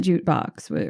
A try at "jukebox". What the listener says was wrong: Say juke box. Sorry, it sounds like you're saying jute box.